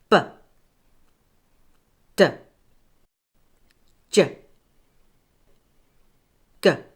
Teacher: Did you notice again how your tongue moved further back each time?